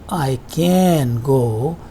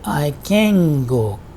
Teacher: part of the tongue and due to this velar sound gur there is an effect on the nasal sound and this becomes a velar sound